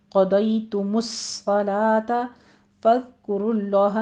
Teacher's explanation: ذال کو ہم سیٹی کی آواز بالکل نہیں لے کر آنی ہے، سٹاپ کریں گے